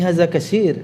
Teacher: ada memang di kalangan orang Arab sendiri ada tha yang dibaca dengan sin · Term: logat